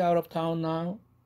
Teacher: out of가 아니라 링킹 되면서 플랩